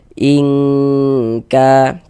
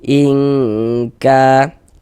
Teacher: Ingka, kemudian didengungkan atau digunahkan. Jadi bagian ing itu suaranya itu kita tahan, kita panjangkan sejenak ya, kira-kira sepanjang 2 harokat. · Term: ikhfa hakiki ab'ad